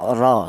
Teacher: Tafkhim itu artinya tebal, yaitu cara menebalkan huruf ra yang berharokat fathah atau yang dibaca tebal itu menggunakan lidah bagian belakang diangkat ke atas ya, ra, seperti itu.